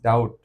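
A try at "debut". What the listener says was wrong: এটা হচ্ছে ডেবিউ, ওই যে ক্রিকেটাররা যে প্রথমবার, হ্যাঁ, এটা হচ্ছে ডেবিউ। টিটা হচ্ছে না আর কি, ডেবিউ। Alright, ডেবিউ।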